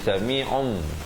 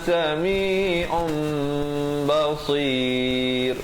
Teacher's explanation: Di sini hukum iqlab, asalnya sami'un, ain itu tanwin di depan, dua baris di hadapan, dhammatain, baca sami'un. Tapi bila datang ba, kita tukarkan daripada un kepada nun kepada mim, daripada sami'un jadi sami'um.